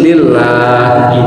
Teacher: Kalau sebelumnya kasroh itu dibacanya tipis lillah.